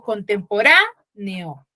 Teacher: tengo un mayor énfasis en la sílaba ra Por ende mi sílabarra va a ser sílaba tónica en algunas